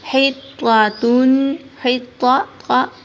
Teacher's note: یہ موٹا طا ہے اور آگے والا تا باریک ہے